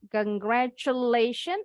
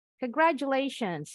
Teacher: Jadi bunyi T-nya berubah ya. Jadi J. Kalau Miss pakai J bunyinya. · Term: bunyi J